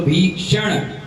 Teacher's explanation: सा कौन सा है, तालू वाला है